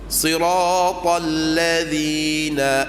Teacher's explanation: angin tertahan Daripada keluar sebab lidah kita letak pada hujung gigi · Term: Zal